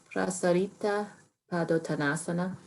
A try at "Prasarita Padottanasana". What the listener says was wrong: Put the emphasis on the second A, prasarita. So prasarita Padottanasana. You'll hear it, prasarita. Prasarita. But it's prasarita Padottanasana.